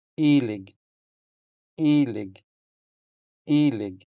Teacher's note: Since the first E is stressed, it sounds longer than the unstressed second E.